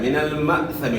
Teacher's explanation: من المأثم، ماسمی نہیں پڑھنا، یہاں حمزہ ساکن ہے، جب بھی حمزہ ساکن آ جائے تو اس میں جھٹکا ہوتا ہے. من المأثم، ماسمی نہیں پڑھنا، مأثمی.